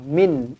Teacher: ya sepanjang-panjang ayat hari ini baru jumpa di sini izhar halq nun mati bertemu dengan Ain dimatikan dengan jelas dan terang